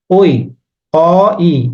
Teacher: ঐ উচ্চারণ করার সময় আমার ঐ অ ই এভাবে আসতেছে অ যোগ ই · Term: যৌগিক স্বরধ্বনি